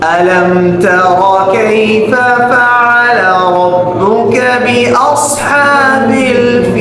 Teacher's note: را ہے وہ بھی موٹا پڑھنا ہے کیوں اس کے اوپر زبر آ رہا